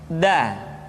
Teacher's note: Da diucapkan dengan menyentuhkan ujung lidah kita dengan bagian gusi-gusi dua gigi seri bagian atas. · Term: huruf da